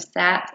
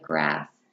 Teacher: this sound is a voiceless fricative sound · the sounds are produced by the tongue behind the teeth these are alveolar sounds · These are alveolar sounds. The s sound is a voiceless frictive sound. The sound for s is s, as in the beginning of sat and the end of grass.